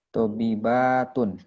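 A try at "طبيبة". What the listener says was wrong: Mumtaz, satu lagi,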